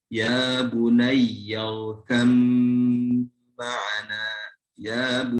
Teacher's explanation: Nah, ketika ada huruf ba sukun bertemu dengan pun punya perbedaan dua sifat, harus tetap diidghamkan. Huruf ba yang tadinya qalqalah lebur jadi tidak ada qalqalah.